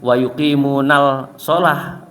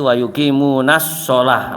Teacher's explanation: langsung masuk ke huruf shotnya, karena itu lam samsiah